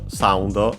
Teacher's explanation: should be accented on the first syllable